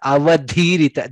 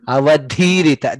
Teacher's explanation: Dha is mahaprana there, which was missed.